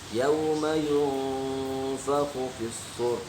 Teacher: Apabila nun sukun selain bertemu dengan huruf idhar maka dibacanya ikhfa, berdengung.